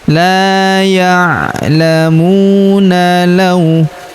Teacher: Huruf mu kita panjangkan dua harakat karena wau sukun di depannya